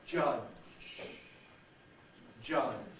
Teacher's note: You can hear how the last part is not actually voiced.